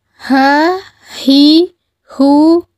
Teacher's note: huruf ini keluar dari tenggorokan yang terjauh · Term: huruf h